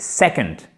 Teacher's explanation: La second, et non pas la seconde, non, c'est second, c'est bam, une accentuation sèche sur la première syllabe